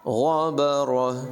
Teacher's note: غین کو پور پڑھیں گے، را کو بھی پور پڑھیں گے، اور آخر میں ہا کی آواز نمایاں ہوگی۔